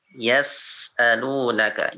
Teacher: Ada desisannya ya, dia ada desisannya, jadi huruf sa itu harus ada itu.